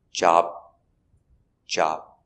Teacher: in job you don't have to make a complete job BBB there's no B sound you just kind of stop